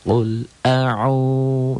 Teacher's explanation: Domah dengan waw mati. Dibaca panjang 1 alif atau 2 ketukan. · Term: mad tabi'i